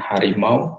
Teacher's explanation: U-nya seolah-olah menjadi semivokoid W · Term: diftong naik